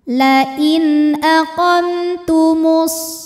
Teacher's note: Kemudian ada hukum izhar syafawi. Karena mim sukun menghadapi huruf selain mim dan ba, yaitu huruf ta, maka mim sukun dibaca jelas.